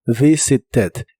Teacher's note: La V del principio es labiodental y vibrante.